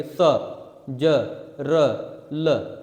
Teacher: दांत के मूल भाग में जीभ हमारी जाकर टकराएगी, स ज र ल, दांत के मूल भाग में जाकर टकराएगी, इसीलिए इसको क्या कहते हैं दंत मूल कहते हैं।